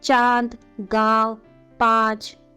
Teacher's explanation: अनुनासिक का उच्चारण नाक और गले दोनों से किया गया है